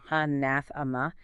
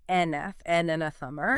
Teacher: mastering the stress is vital. You've got to focus on that strong second syllable, anathema. It sounds strong.